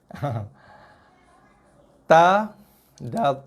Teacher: Ta, da, ta, hujung lidah sentuh belakang gigi atas.